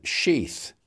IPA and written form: ʃiːθ (sheath)